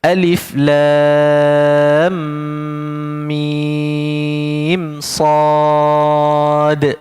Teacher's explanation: mim antara mim dengan sad ni tak boleh dengung pula. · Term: izhar syafawi